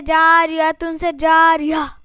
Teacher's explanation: گول تا پر وقف کرنا ہو تو ہائے ساکنہ سے بدل دیتے ہیں، جیسے جاریتن سے جاریہ.